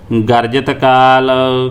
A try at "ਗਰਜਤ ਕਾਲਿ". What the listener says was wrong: ਇਹ ਕਾਲ ਤੇ ਮੇਰਾ ਸਿਹਾਰੀ ਲੱਗੀ ਇੱਕ ਤੇ ਪਹਿਲੇ ਕਾਲ ਤੇ ਸਿਹਾਰੀ ਲੱਗੀ।